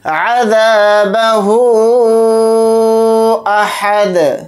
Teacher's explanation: दाल को यहाँ पर साकिन बनाकर पढ़ेंगे हालत वक्फ में। और अगर दाल साकिन होगा यानी दाल के ऊपर जज़म लगाकर पढ़ेंगे तो दाल के अंदर क़लक़ला करेंगे, क्योंकि दाल के ऊपर जज़म लगाने से दाल हुरूफ़ क़लक़ला के हुरूफ में से एक हर्फ है।